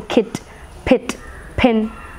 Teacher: it is unrounded front half closed vowel